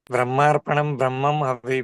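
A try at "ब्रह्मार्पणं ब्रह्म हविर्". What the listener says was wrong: ये ब्रह्मम के ऊपर बिंदी नहीं है, ब्रह्म है ये। दोबारा बोलिए।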